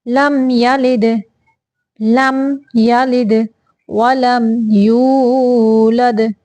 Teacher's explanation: لم پہ غنہ نہیں کرنا، صرف ظاہر کرنا ہے، کیونکہ یہاں پہ اظہار شفوی کا قاعدہ ہے، یعنی میم ساکن کے بعد یا آ گیا ہے، یعنی میم ساکن کے بعد یا آ جائے تو یہاں پہ اظہار کا قاعدہ ہوتا ہے، اظہار شفوی کا۔